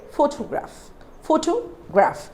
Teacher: Photograph means we are stressing on the first syllable, PHO.